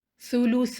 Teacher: آخر میں الف مد ہے تو ث کو 2 کاؤنٹ لمبا پڑھیں گے